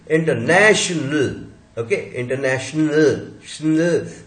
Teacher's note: श, न, ल तीनों मिलके बिना तोड़े श्नल